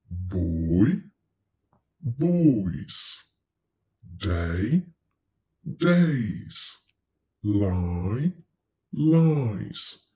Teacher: when you have a word that ends with a voice sound, so you can feel the vibration in your throat, S is pronounced Z. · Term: voiced